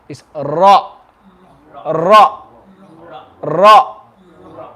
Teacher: So for the letter ra, your tongue is only going to touch the front two teeth.